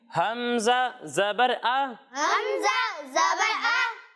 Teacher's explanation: जब हम आइन की अदायगी करेंगे तो इसे हलक के दरमियाने हिस्से से पढ़ना है, और जब हम हमज़ा की अदायगी करेंगे तो इसे हलक के निचले हिस्से से पढ़ना है